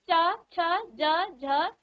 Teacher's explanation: आपकी जीभ तालु को स्पर्श कर रही है